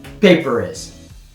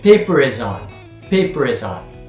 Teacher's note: paper is, there's no break between them. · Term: liaison